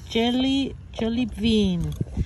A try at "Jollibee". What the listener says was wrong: ¿Jolly Bean o Jolly Bee? Jolly Bee, abejita. Jolly Bean. Tú dijiste Jolly Frijol.